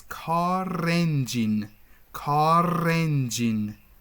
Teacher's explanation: r is going to link to the next sound after the vowel r is gonna linked into n in a car engine okay